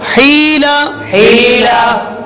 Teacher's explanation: یہاں پر یا مدہ ہو رہا ہے کیونکہ یہاں پر یا ساکن سے پہلے زیر آ رہا ہے